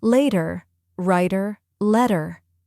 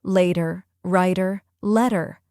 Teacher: Notice how the T disappears into a soft D sound. This is a signature of the American accent. · For the T flap, the tip taps quickly. For the R, the tongue curls back.